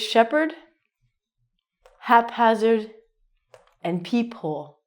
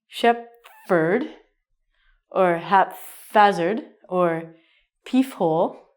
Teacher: we actually have to separate the p and the H sound in these words